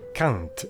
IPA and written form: kãnt (quand)